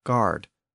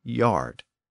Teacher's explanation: the G sound shifted to a y sound in a lot of Old English words